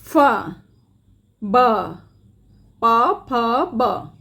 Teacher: द्योष्ठ में दोनों होठ साथ में काम करते हैं। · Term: द्योष्ठ ध्वनियाँ